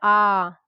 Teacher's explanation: विवृत में आ, इसके उच्चारण मुख सबसे अधिक खुलता